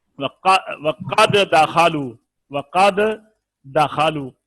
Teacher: پہلا ساکن ہے دوسرے کے اوپر زبر ہے، جب ہم نے ملا کر ایک دوسرے کے اوپر شد آ گئی